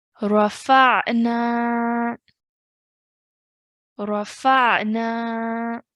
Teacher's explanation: we're elongating at the end for 2 counts because of the alif mud. Okay, there will be no change in pronunciation when we want to take a pause.